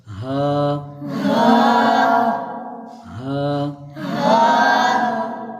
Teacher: ہاں حلق کے نیچے والے حصے سے ادا ہوتا ہے